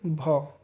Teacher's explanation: स्पर्श भी हो और सघोष या घोष भी हो और महाप्राण भी हो, और वो ओष्ठ से भी बोले जाते हो